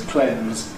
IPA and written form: klenz (cleanse)